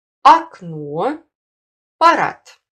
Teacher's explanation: В первом предударном слоге после твердых согласных и в абсолютном начале слова на месте буков А, О звучит гласный А, А крышечкой, который произносится при менее широком растворе рта, чем звук А ударного слога.